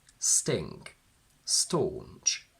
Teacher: we don't aspirate T.